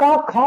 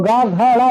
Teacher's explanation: आप का खा बोलोगे तो कंपन नहीं होगा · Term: अघोष